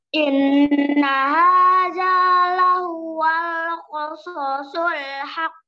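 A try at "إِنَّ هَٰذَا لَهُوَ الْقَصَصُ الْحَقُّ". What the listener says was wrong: Kok ketinggalan koknya? Haq kok. Kirain tadi mau mantul, enggak jadi mantul, jadi ketinggalan.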